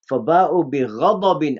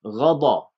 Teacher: the ghain, it has isti'la here. You lift the back of your tongue, and the dad has another attribute.